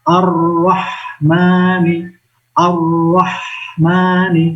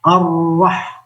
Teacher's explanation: hak sukun itu juga dibiarkan anginnya berdesis. Nggak boleh membaca ar-rah, tidak langsung berhenti, tidak boleh, tapi biarkan anginnya, udaranya mengalir.